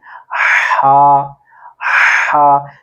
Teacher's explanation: وسط حلق، یعنی کہ حلق کے درمیان والے حصے سے اس کو ادا کرنے کی کوشش کرنی ہے